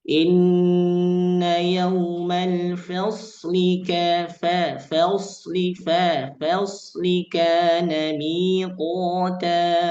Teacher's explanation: Inna yaumal faslika harusnya tetap dalam keadaan istifal. Fa-nya tidak terangkat pangkal lidah, dia tetap sejajar dan tidak menjadi tebal secara vokal ketika ketemu setelahnya sad yang sukun.